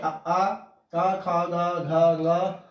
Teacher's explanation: जिनका उच्चारण स्थान कंठ बताया गया है और इन्हें हम वर्ग कहेंगे कंठ वर्ण।